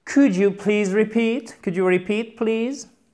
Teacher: On remonte l'intonation parce que c'est une yes-no question.